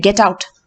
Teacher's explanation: commands are falling tone